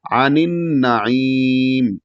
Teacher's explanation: نون کو نون میں ملانا ہے اور نون مشدد ہے اگلا والا تو وہاں پر غنہ ہوگا اور عانین غنہ کر کے تھوڑی دیر ناک میں آواز رکھیں گے.